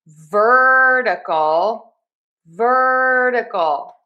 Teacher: the flap T is like a fast D sound.